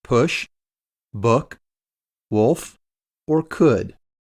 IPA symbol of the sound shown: ʊ